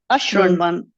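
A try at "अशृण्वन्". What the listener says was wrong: Samyak. Excellent.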